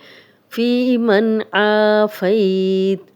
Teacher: यहाँ पे जज़म वाला नून है और आगे हरूफ़े हल्की में से आइन आ गया है, यहाँ हम गुन्ना नहीं करेंगे।